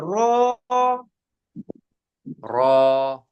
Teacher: আর র বললে জিহ্বার আগার পিঠটা খালি উপরের দিকে লাগবে